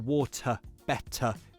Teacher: when the t is between two vowel sounds, then you really should pronounce the true t